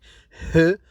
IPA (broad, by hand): h